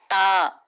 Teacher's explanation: जबान की नोक को ऊपर के दांतों की जड़ को लगाने से ता निकलता है। · تا، مخرج نطعی، اس کا مخرج ہے زبان کی نوک کو اوپر کے دانتوں کی جڑ کو لگانے سے تا نکلتا ہے۔